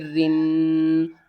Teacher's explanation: را کے نیچے زیر ہوگی تو را کو ہم باریک پڑھیں گے